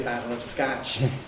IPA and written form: ˈbaɾɫ̩ əv skaʧ (bottle of Scotch)